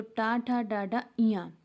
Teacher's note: टा वर्ग में जितने आते हैं उनको हम क्या बोलेंगे, मूर्धन्य व्यंजन बोलते हैं। तो टा ठा डाडा इया, उच्चारण स्थान इनका क्या होगा, मूर्धा।